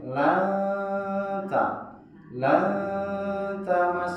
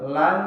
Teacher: Jadi nun matinya itu disamarkan ke huruf ta. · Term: ikhfa hakiki